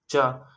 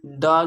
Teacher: तो अगर हम च का उच्चारण करते हैं तो इसमें हमारे स्वर तंत्रियों में कंपन नहीं होता।